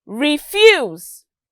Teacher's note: notice that there was a fall and then arise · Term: intonation